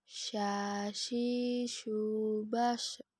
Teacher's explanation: Huruf sya keluar menyentuh tengah lidah dengan langit-langit. Diucapkan mengalirnya udara dan nafas, bahkan ketika kita melafalkan, menyebar nafas dan udaranya yang disebut dengan tafashi.